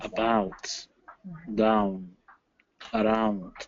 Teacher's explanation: the ow vowel is also a diphthong. It's two vowels stuck together.